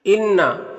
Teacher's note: انا، یہاں پر نون مشدد ہے تو غنہ ہوگا، یعنی نون کی آواز کو ناک میں لے جا کر گنگنائیں گے ایک الف کی مقدار